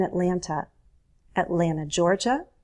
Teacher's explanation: we dropped the T often in Atlanta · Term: drop the T